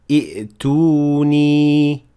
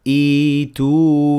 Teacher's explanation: But if you start at the word, the conflict will exist between the first and the second Hamza, and to get over it, you will have to turn the second Hamza into a long vowel of the same sort as the short vowel of the first Hamza